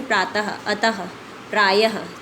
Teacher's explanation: आहा को विसर्ग कहा जाता है। इसका उच्चारण ह की तरह होता है।